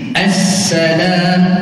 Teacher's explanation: Yang pertama kata ulama, aqwa tadi adalah safir yang berdesir, yang paling kuat, terjadi pada huruf-huruf safir yang bertasydid, yang ada sab, yang ada sabdu. Maknanya huruf zai, huruf sin, huruf sad, kalau dia ada sabdu, maka safirnya, desirnya lebih kuat.